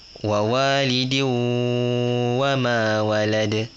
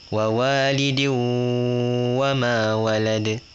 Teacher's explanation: dari tanwin dekat dal tu dia masuk ke waw. Dia jadi diu. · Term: idgham